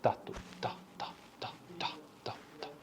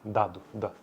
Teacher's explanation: O segmento T é desvozeado e o segmento D é vozeado. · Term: vozeamento